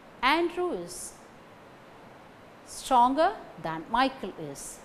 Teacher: Andrew, stronger, Michael. These three words carry stress.